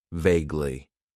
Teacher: It has 2 syllables, and the stress is on that first syllable.